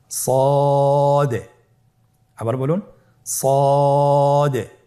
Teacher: জিহ্বার আগা সামনের নিচের দুই দাঁতের পেট ও আগার সঙ্গে লাগিয়ে উচ্চারিত হয়।